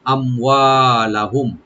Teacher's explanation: মিম সাকিন এখানে জাহার করবো আমরা, এজাহারকে বেশি করে করতে হবে, মিম সাকিন পরে বিশেষ করে ফা এবং ওয়া আসলে বেশি করে এজাহার করতে হয়, yani এখানে গুন্না হবে না